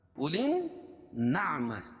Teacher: اولین نعمہ، یہ کھینچیں گے نہیں، اس کو صرف حمزہ کو پڑھیں گے اور لام کو نون میں ملائیں گے، اور یہاں حروف شمسیہ ہے کیونکہ لام نہیں پڑھی جا رہی ہے، یہ لام کو نون میں ملا رہے ہیں.